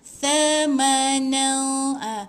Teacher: Ni huruf sama dengan zal, makhraj dia hujung lidah di antara dua gigi.